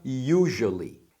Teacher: Esse S do usually tem um som de J mesmo, tá? Você não está ouvindo errado.